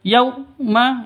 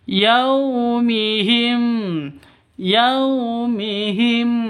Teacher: Yau sifat lin, lentur, lemas, tidak boleh disentak, tidak boleh dipanjangkan.